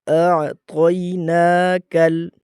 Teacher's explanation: یہاں پر آ نہیں ہے، یہاں پر اع ہے، حمزہ عین زبر اع، اس کو اع پڑھا جائے گا، آ نہیں پڑھا جائے گا۔ دوسری غلطی یہاں پر دیکھیں طا ہے، تا نہیں، کہ ہم اس کو تینا پڑھتے ہیں، آتینا، یہ دونوں غلط طریقے ہیں۔